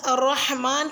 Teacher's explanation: لفظ الرحمن کی را کو موٹا یعنی کہ پر پڑھنا ہے، کیونکہ را پہ جب زبر آ جاتی ہے تو را کو پر یعنی کہ موٹا پڑھا جاتا ہے، اور را۔